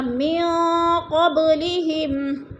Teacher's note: من قبلہم، نون ساکن کے بعد قوف حروف قلقلہ میں سے آگے ہے، حروف اخفا میں سے آگے ہے تو ادھر اخفا کریں گے، یعنی ناک میں آواز کو چھپا کر پڑھیں گے۔ من قبلہم، قوب پہ قلقلہ ہے، با ساکن حروف قلقلہ میں سے تو با کو ہلا کر پڑھیں گے۔